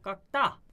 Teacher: 본래 경음이 아니었는데 경음으로 바뀌는 거. 된 소리가 아니었는데 된 소리로 바뀌는 거. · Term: 경음화